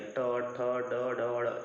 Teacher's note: ट वर्ग जब हम बोलते हैं तो हमारी जुबान बिल्कुल मुड़ जाती है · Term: मूर्धन्य